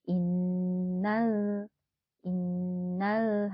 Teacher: hati-hati lam sukunnya tidak memantul ya